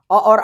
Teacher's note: अ और आ का उच्चारण कहाँ से होता है, कंठ से